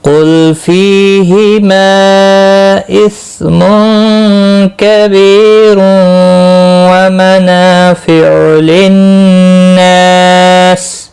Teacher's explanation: قل لام ساکن کو ہلانا نہیں، قاف مستعلیہ ہے، پھر پڑھا جائے گا۔ فی یا مدہ ہے، ایک الف کے برابر کھینچ کر پڑھیں گے۔ ہما مد منفصل ہے، تین الف کے برابر کھینچ کر پڑھیں گے۔